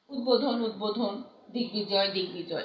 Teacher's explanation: 4 নম্বর নিয়মটি দেখো, যে সন্ধি বা সমাসবদ্ধ পদের ব ফলা অবিকৃতভাবে উচ্চারিত হয়